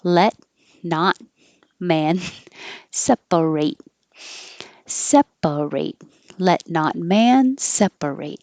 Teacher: hold your tongue in the T position and not release it with airflow